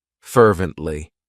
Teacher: The next adverb is one of my favorites, fervently. It has 3 syllables, and the stress is on that first syllable, fervently.